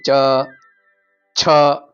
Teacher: છે ને જીભ ચ છ મહાપ્રાણ છે છ જ ગટલા માટે જે આપણી જીભ તાળવાને અડે છે એટલા માટે આપણે એને તાલવ્ય તરીકે ઓળખીએ છીએ